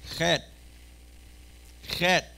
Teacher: a chet is pronounced in the back of the throat on top